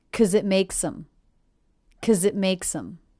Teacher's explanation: I reduced the word because to simply 'cause. The K, schwa, Z sound.